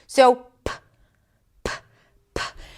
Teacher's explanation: consonants that are produced at the lips and produced with a stop